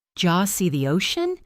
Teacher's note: Did you often becomes didja